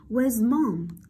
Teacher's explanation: Sử dụng tông giọng đi xuống, đúng không nào?